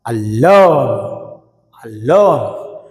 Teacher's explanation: లోన్, అలోన్. ఆని తక్కువగా పలుకుతామో, లోన్ గట్టిగా పలుకుతాం అన్నమాట